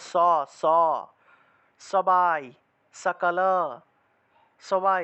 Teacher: এটা দন্তবর্ণ দন্ত মানে হলো দাঁত দিয়ে উচ্চারণ করতে হয় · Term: দন্তস